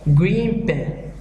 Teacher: In this, the sound at the end of one word changes to be more like the sound at the beginning of the next. Thus, the N at the end of green becomes an M when placed next a word starting with P. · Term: Assimilation